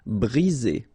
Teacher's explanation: 1 vowel, 2 vowels, and only 1 S between the 2, so you get the sound Z.